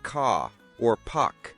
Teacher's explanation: In many British accents, the R sound at the end of words or before a consonant is often not pronounced like in car or park.